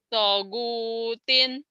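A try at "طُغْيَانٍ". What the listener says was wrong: tonnya panjang atuh.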